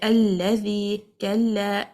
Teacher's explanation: when you say alladhi, kalla, the pronunciation of the lam is light. The sound will be muraqqaq.